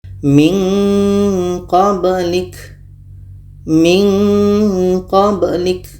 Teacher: untuk qa dengan ka ini menghasilkan bunyi nga, bunyi nge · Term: ikhfa abad